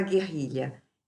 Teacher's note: Eu não ouço esse U, então esse GU diante de E é dígrafo, é G. Eu não falo U. RR é dígrafo e LH.